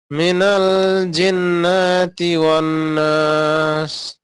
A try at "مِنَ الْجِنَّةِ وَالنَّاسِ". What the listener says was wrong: টান হবে না, জিন্নাতি। মিনাল জিন্নাতি ওয়ান নাস। জিন্নাতি ওয়ান নাস।